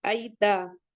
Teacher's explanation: یا لین ہے، نرمی سے پڑھیں گے، تا کو جلدی پڑھیں گے